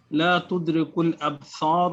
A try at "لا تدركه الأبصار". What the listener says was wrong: You have forgotten who. لا تدركه.